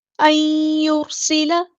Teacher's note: یہاں پر سین کی سیٹی ہم نے واضح کرنی ہے